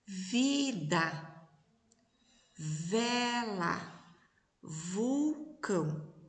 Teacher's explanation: quando a gente fala o V, tem uma vibração nas cordas vocais